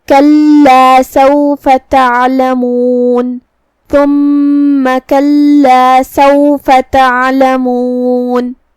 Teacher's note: ہم نون پہ رکیں گے تو اس پہ جزم سے رکیں گے تو ہمیں نون کو ظاہر کرنا ہے